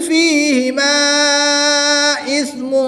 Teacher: الف مدہ کے بعد حمزہ دوسرے کلمے میں ہے تو یہاں پر مد منفصل ہوگی، 2 سے 3 الف تک کھینچ کر پڑھیں گے